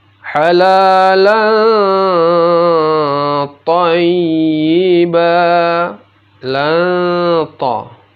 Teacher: lanta, lannya dibaca samar dan didengungkan